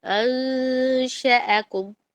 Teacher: نون اور شین کے درمیان میں نا اپنی زبان کو رکھنا، درمیان میں رکھنا، نہ پورے نون میں جائے نہ شین میں جائے، اور 2 الف کے برابر اس کو لمبا کریں گے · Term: اخفا